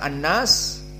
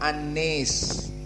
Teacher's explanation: jumhur membaca Annas Adapun Abu Amr dibaca annis dengan Al imalah alkubro